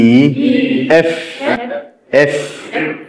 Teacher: বাতাস বের হতে হবে দাঁতের ফাঁক দিয়ে, নিচের ঠোঁট দিয়ে উপরের দাঁত স্পর্শ হবে এবং বাতাস বের হবে